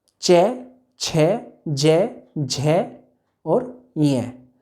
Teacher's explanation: च वर्ग में जीभ जो है तालु से टच होनी ही होनी है। च वर्ग के सारे च, छ, ज, झ और य, 5 जो च वर्ग के 5 वर्ण हैं उनमें जीभ जो है तालु से टच हो रही है।